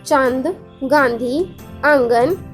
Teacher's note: अगला पढ़ेंगे अनुनासिक। इनका उच्चारण नाक और गले दोनों से होता है, जैसे चांद, गांधी, आंगन आदि।